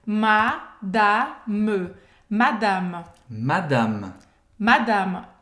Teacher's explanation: A gente não fala madame, não existe essa nasalização. É madame. Madame.